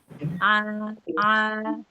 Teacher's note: Karena huruf tipis maka ketika fathah dibuka dengan bibir agak senyum. A a. Nah, agak senyum sedikit karena dia huruf tipis ya.